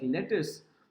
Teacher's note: Lettuce has two syllables. Let has more stress. Us has less stress. So this is basically what is referred to as a trochaic words. · in a word like lettuce, the stress is on the first syllables. Lettuce has two syllables.